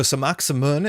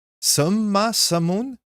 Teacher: So you don't get that K in there at all.